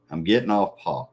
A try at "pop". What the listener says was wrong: in case people misunderstand you saying POP. Because right now, to me, it sounds like you're saying POT.